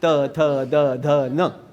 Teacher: दंतव्य काय आहे त थ द ध न